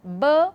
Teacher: when you utter B, there is a bit of more vibration in the vocal cord area. So the extra there is a bit of extra noise. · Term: voiced